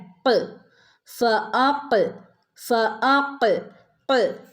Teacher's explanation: നാവിൻ്റെ അങ്ങേ അറ്റം, നാവിൻ്റെ മുരട് ഭാഗത്ത് നിന്ന് വരുന്ന അക്ഷരമാണ് ഖാഫ്.